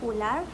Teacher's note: vokal belakang sempit atau tinggi u, seperti ular